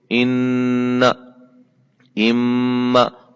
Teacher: मुकम्मल एक अलिफ की मिकदार के बराबर गुन्ना करेंगे